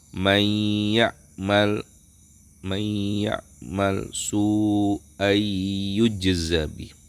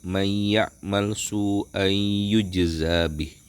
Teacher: Maka ketika nun mati atau tanwin bertemu dengan salah satu huruf tersebut, maka nunnya menjadi dileburkan ke huruf yang setelahnya dan ada dengungan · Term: idgham bighunah, idgham bi gunnah